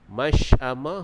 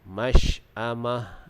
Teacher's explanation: huruf shin itu dibaca dengan sifat tafashi, yakni berhamburan udara.